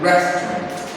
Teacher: That E sound is given a little more stress and is slightly elongated.